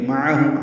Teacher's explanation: معہم عین وسط حلق سے ادا کریں گے، میم ساکن پہ اظہار شفوی ہے.